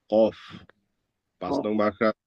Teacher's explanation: নং মাখরাজ জিহ্বার গোড়া তার বরাবর উপরের তালুর সঙ্গে লাগিয়ে · জিহ্বার গোড়া হতে একটু আগে বাড়ি তার বরাবর উপরের তালুর সঙ্গে লাগিয়ে